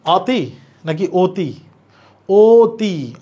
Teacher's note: অয়ের উচ্চারণ ও এর মতো হচ্ছে, মুখ ছোট হয়ে যাওয়া, তাহলে এটা সংবৃত।